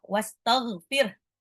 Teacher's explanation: ghain itu agak ngorok, dia sama satu makhraj dengan kha, ada di tenggorokan bagian atas agak ngorok.